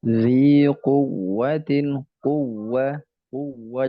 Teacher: perhatikan atau berhati-hatilah di huruf wawu yang tasdid. Jangan sampai dia seperti mad.